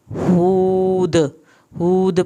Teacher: ہود، ہود پہ واو ساکن کھینچا جائے گا، ہا پہ ہونٹوں کو گول کرنا ہے تاکہ پیش صحیح ادا ہو، اور آخر میں دال پہ کلکلا کرنا ہے۔